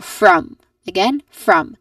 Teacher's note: It starts with a consonant cluster f for and then uh you pair it with a vowel and it ends with the nasal sound m